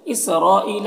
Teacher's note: نو میں جو مد ہے یہ مد منفصل ہے، اسرائیل، را کے اوپر زبر ہے، را کو پر پڑھیں گے اور یہ جو مد ہے مد متصل ہے اور یہاں پر یا مدہ ہے، ایک الف کو برابر کھینچیں گے۔